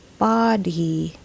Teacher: Locals would usually say buddy when using this word because Filipinos often interchange the O and U sounds in English. If we use our English vowel sounds correctly though, this should be pronounced body, not buddy.